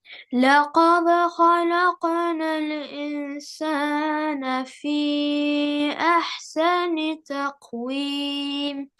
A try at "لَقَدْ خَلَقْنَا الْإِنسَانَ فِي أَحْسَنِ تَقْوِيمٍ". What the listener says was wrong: Don't say تخويم, say تقويم. Yes, you repeat the word, take a single word that's going wrong, right? word that's not pronounced correctly, just take that word and say it several times correctly. تقويم, تقويم, تقويم, تقويم. And if you say it incorrectly, like sometimes you say it تقويم, or sometimes you say it تخويم, then you'll start over.